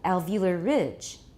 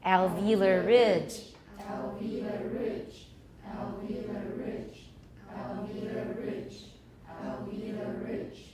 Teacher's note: it's not a compound noun, so we need to stress ridge, even though we repeat it over and over and over again.